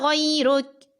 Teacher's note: جب وقف کریں تو کاف کو نرمی سے پڑھیں اور باریک پڑھیں